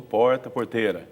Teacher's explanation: retroflexo seria o r caipira